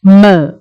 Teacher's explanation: One is a bilabial, where you use two lips, m.